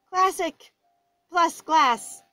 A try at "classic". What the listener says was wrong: It just, it kind of sounds like you said classic with a head cold. Classic. It's classic.